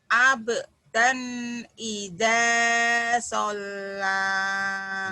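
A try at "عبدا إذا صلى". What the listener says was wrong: Abdan idza, kurang nyamber doang, Bu. Abdan idza sholat. Coba samber. Hentak.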